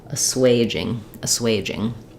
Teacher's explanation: the first letter a is unstressed so the the stress falls on the second syllable here so my first letter A will be a schwa sound